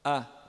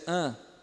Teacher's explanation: Não é nasal, nada a ver, ele é oral. A. Só a boca que abre mais. A. Nasal seria an, né?